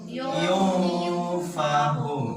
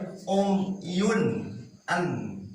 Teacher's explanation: Harus samar-samar ke lafaz ang dan ditahan. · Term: Ikhfa hakiki